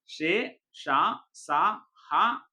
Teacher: గాలిని బయటకి ఊదుతూ పలికే అక్షరాలు ఊష్మాలు